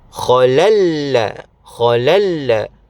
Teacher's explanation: So bacaan asal tanwin adalah lan. Tidak lagi dibunyikan nun lan kerana dimasukkan ke dalam huruf lam. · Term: idgham bila ghunnah